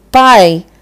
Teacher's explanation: Quando a vogal ela sai livre assim, pai, sem nasalizar, é oral.